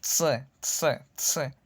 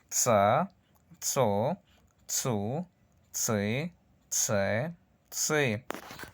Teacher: es como un sonido de una T y una S juntas. Simplemente golpeamos los dientes cuando pronunciamos una S. C, C, C. Y vemos tsa, tso, tsu, tsi, tse, tsi.